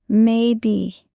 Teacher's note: Stress the first syllable.